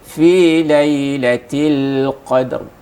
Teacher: Nah, sekedar pantulan dan seolah-olah, ini seolah-olah ya, tapi bukan. Seolah-olah huruf dal itu berbaris fathah. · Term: qalqalah sughra